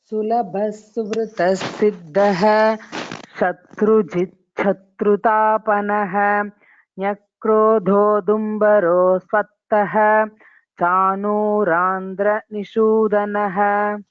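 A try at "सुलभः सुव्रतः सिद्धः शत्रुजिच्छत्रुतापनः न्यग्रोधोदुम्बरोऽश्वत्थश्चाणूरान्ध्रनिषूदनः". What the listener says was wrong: Maybe little more stress on Mahapranas next time will be helpful.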